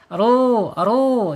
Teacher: ru ini dibaca tebal ya tebal karena harakatnya domah Ya, alladzina kafaru ro ya ro ya saya ingatkan terus ya.